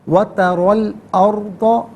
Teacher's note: ناظرین ترا اگر انفرادی طور پر پڑھیں گے تو را پر کھڑا زبر ہوگا ترا، اور اگر ملا کر پڑھیں گے تو را پر زبر ہوگا، اسے الارض کی لام ساکن کے ساتھ ملائیں گے، درمیان میں سے الف حمزہ کو حذف کریں گے، را ساکن ما قبل حمزہ پر زبر، را ساکن کو پر کر کے پڑھا جائے گا